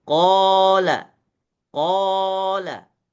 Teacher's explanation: ketika dibaca dengan mad dan dipanjangkan itu lebih terdengar lebih kelihatan suara ketebalannya berbeda dengan kalau mengucapkan qo saja qo dengan qo qo dengan